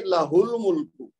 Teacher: جب ہم ملا کے پڑھیں گے نا تو ہا جو ہے یہ لام کے ساتھ مل جائے گی